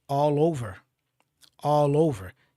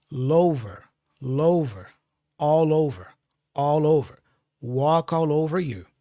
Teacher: You see, I'm connecting the L with the O for over. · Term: connection, the connection